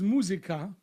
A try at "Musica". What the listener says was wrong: Stress the U, not musica.